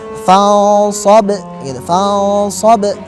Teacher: Adapun hukum selanjutnya yang akan kita dapatkan di dalam kalimat fansab adalah hukum qalqalah kubra. Kenapa? Karena ba yang sukun dan berada di akhir kalimat.